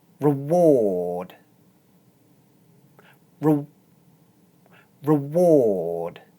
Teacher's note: This is a weak syllable, so you don't need to open your mouth very much. Instead, you can go straight from the r sound to the w sound.